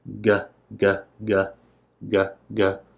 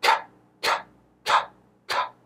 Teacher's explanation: Here we have the voiced g, g, g, g, g. I can feel a vibration, and the voiceless k, k, k, k. No vibration, and of course the toilet paper moves a little bit more there.